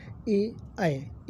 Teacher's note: कंठ तालव्य होता है ए ऐ दो जो उच्चारण होते हैं इनका कंठ तालव्य से इनका उच्चारण होता है